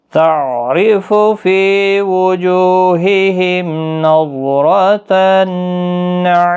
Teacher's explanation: میم ساکن کے بعد نون آئے اظہار شفوی ہوگا